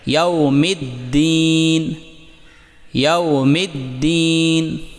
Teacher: دال پر تشدید ہے، اسے سختی اور قوت کے ساتھ پڑھیں تاکہ آواز نہ لرزے